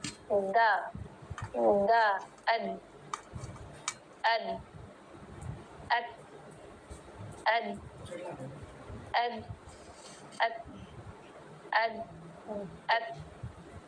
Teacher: دال میں آواز کیوں سنائی دے رہی ہے؟ کیونکہ دال میں جہر تھا